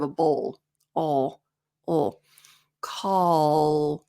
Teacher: even though my tongue is in the same placement L LL the tension's back here so it changes the sound